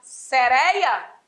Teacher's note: O timbre também é fechado, igual a correia. E devemos acentuar sereia.